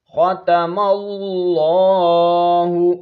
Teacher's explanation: خا کو موٹا کر کے پڑھیں گے، حروف مستعلیہ میں سے ہے،